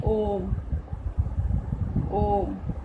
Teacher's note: प्लुत स्वर जिसको ह्रस्व स्वर से 3 गुना समय लगता है, उसको कहते हैं प्लुत स्वर।